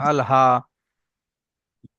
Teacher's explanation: হা ভিতর থেকে উচ্চারণ হবে, কোনো চাপের সঙ্গে না